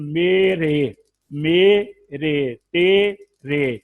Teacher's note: الف کو یا کی طرف جھکا دے، زبر کو زیر کی طرف مائل کر دے، تو یہ بڑی یا کی آواز، اس کو وہ یائے مجہولہ کہتے ہیں